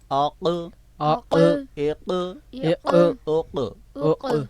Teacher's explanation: زبان کی جڑ اور اس کے بالمقابل نرم تالو، جس کو لحات بھی کہتے ہیں، قوا بھی کہتے ہیں. تو وہ قوے کا جو زبان کی جڑ سے ملنا تھا، تو حرف قاف کی آواز پیدا ہونی تھی.